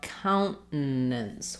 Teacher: with a short stopped N, basically making a stop T there, and then a syllabic N